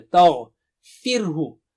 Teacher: تا باریک ہے، غین جو ہے موٹا اونچا ہے، تغفرہ، را باریک ہوگا اور رکیں گے آپ تو ہا کی آواز صاف ہو۔